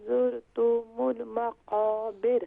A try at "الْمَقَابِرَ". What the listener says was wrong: زرتم نہیں ہے، یہاں پر تا کو بھی شارٹ ساؤنڈ کریں گے، میم کو بھی شارٹ ساؤنڈ کریں گی، تو زرتم ہاں جب آپ را سے پہلے کسرہ ہو تو پھر را جو ہے وہ لائٹ ہوگی.